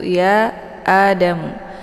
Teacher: Jadi ya Adamu ini dinamakan dengan mad jaiz munfasil ya, karena antar mad tabi'i dengan hamzahnya terpisah di lain kalimat. Jadi mad jaiz munfasil ini dibaca panjang boleh 4 atau 5 harokat, harus konsisten dengan nafas.